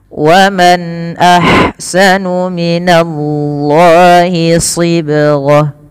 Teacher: Izhar artinya jelas, halqi berarti dari huruf-huruf yang keluar dari tenggorokan, yang dimana nun matinya bertemu dengan hamzah, maka harus dibaca dengan jelas. Kemudian alirkan nafas ketika melafalkan ha. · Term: izhar halqi